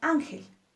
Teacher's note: nuestra sílaba tónica en Ángel es an